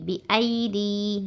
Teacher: ای complete پڑھنا، یالین ہے یہ، اچھے سی نرم آواز کے ساتھ